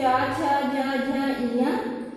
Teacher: इसका उच्चारण जो है तालु से होता है। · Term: चा वर्ग